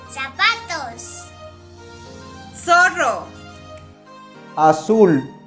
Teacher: The Spanish letter Z is pronounced as S, like the S in the English word sun.